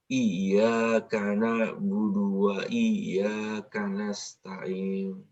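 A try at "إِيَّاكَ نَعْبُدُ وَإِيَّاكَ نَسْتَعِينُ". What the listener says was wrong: Baik, barakallahu fiik.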